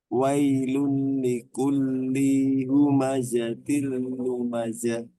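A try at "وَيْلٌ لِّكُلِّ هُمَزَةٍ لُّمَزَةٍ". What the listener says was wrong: Linya pendek. Wailul likulli humazatil lumazah.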